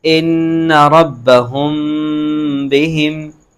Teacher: ہاں میم ساکن کے بعد با آ رہا ہے تو یہاں پر کیا ہوگا؟ اخفا شفوی ہوگا